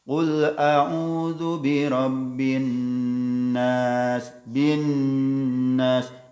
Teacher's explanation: Gunnah itu harus ditahan dulu. Setidaknya minimal 2 harokat. Yang sering antara 2 sampai 3 harokat.